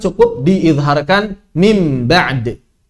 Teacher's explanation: maka suara nunnya berubah menjadi suara mim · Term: qalab